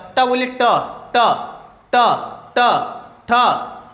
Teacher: अब ट ठ जब बोल रहे है तो आपका जो जीभ है वो मुड़ जा रहा है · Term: मुर्धा, मूर्धा